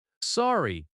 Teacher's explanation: Sorry has a gentle falling tone.